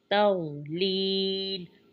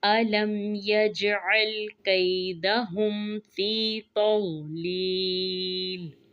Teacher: या मद की वजह से फ़ी को खींचेंगे।